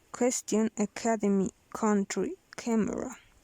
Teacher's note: Voiceless fortis velar plosive. Aspirated.